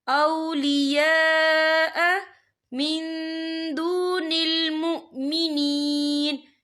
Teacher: یا دیکھیں اولیاء یہاں خالد سے پہلے زبر ہے اور اس پر مد بھی ہے. یہ مد جو ہے مد متصل ہے، اس کی مقدار 4 حرکت کے برابر ہے، تو ہم اسے 4 حرکت کے برابر کھینچ کے پڑھیں گے.